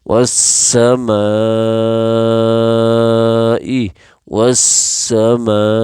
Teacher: واس سین زبر سا میم اچھا یہاں چار چیزیں پڑھیں گے میم الف مد زبر ما 5 الف کے برابر 5 سیکنڈ کے برابر کھینچیں گے